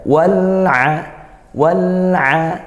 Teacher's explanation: dibaca jelas alirkan suaranya lam tidak ditekan tapi tidak juga dialirkan lepas ya mengalirnya sedang saja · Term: izhar qariyah